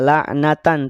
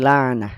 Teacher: tak marbutoh, dia saat waqaf maka berubah jadi ha, ya, tidak la'natan tapi la'nah.